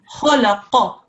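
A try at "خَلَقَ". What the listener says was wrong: The only thing was that you did just then was stretch the qaf a little bit too long.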